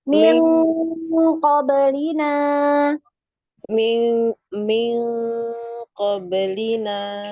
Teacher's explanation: Bunyinya NG tapi naik, pangkal lidahnya naik.